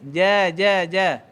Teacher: jangan keluarkan angin waktu sebut Jim tu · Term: Jim fathah